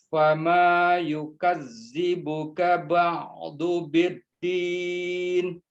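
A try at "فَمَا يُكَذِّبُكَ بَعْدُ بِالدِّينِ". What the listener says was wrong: Namun zalnya itu masih masuk ke zai. Bukan.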